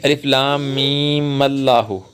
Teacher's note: یعنی لفظ اللہ کو پیچھے الف لام میم سے ملا دینا، یعنی میم کو لفظ اللہ سے ملا کے پڑھنا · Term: وصل